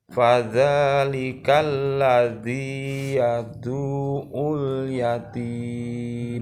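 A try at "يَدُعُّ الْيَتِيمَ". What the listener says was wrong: Du-nya tidak panjang tapi langsung ke ain, bukan yadu'ul tapi yadu'ul. Yadu'ul.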